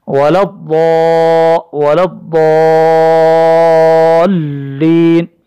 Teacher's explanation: ضاد کو ہم کھینچیں گے، ضاد تشدید بھی ہے، مد بھی ہے یہاں پہ